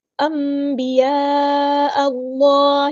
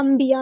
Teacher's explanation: نون ساکن کے بعد آیا ہے با تو ہم نون ساکن کی آواز کو میم کی آواز میں بدل دیں گے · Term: اقلاب